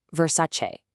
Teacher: remember that Italian che ending? It's a che sound. So that gives us 3 clear syllables.